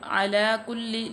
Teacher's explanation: लाम मुशद्दद है, कुल्ली यानी कि जमा के पढ़ेंगे।